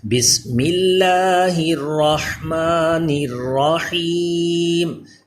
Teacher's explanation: الرحمن اور الرحیم اس کے را کے اوپر زبر آ رہا ہے، اس لیے را کو پر پڑھ رہے ہیں